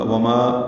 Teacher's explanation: وما ما الف مدہ ہے، دو حرکات لمبا ہے